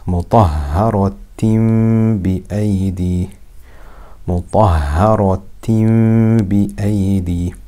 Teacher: So it is iqlab. Instead of the tanween making an an sound, it will make an am sound because it changes into a meme